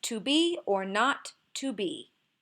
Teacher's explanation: there's emphasis on the words be not and be